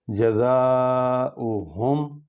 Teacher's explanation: جزا کو لمبا کریں گے کیونکہ الف پر مد ہے، اور مد والا حرف جو ہے وہ لمبا کر کے کھینچ کے پڑھا جاتا ہے، کیونکہ مد کا معنی بھی لمبا کرنا ہے۔